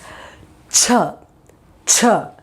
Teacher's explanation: this is aspirated sound you give more pressure